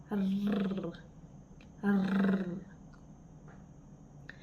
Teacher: sa paraan ng artikulasyon na pagkatal ng letrang R at panggilagid na punto ng artikulasyon